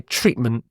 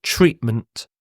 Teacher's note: when I say this word I don't really pronounce the T I almost like say treatment there's a what's called a glottal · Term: glottal stop